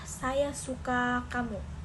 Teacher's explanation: Jika penutur ingin menegaskan kata suka, maka suku kata itu akan diucapkan lebih panjang dan mantap ya. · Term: penekanan